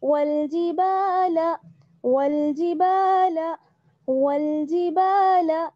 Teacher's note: الف مدہ ہے, الف جڑا ہوا ہے, اس لیے ایک الف کے برابر با کو کھینچیں گے